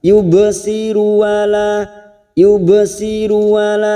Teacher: Wala yubsiru, ba sukun qalqalah sugro karena mati asli di tengah kalimat kita pantulkan